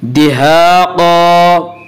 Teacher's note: अलिफ मद्दा को एक अलिफ के बराबर खींच कर पढ़ेंगे।